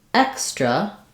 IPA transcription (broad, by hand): ɛks